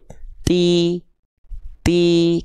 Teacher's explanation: ketika melafalkan Ti pastikan ada hamsnya ada percikan nafasnya